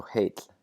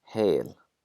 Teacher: We lose the double L sound and we also lengthen that vowel.